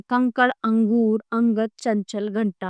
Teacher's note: अनुस्वार। यह स्वर के बाद आने वाला व्यंजन है जिसकी जो है ध्वनि नाक से निकलती है। यह नासिक के व्यंजनों ड, ण, न और म के स्थान पर प्रयोग होता है और इसका उच्चारण पूर्ववर्ती स्वर के बाद होता है।